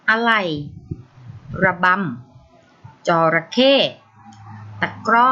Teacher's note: หากคำที่มีวิสรรชนีย์อยู่ที่พยางค์หน้าเวลาอ่านเราจะอ่านออกเสียงเพียงครึ่งเสียง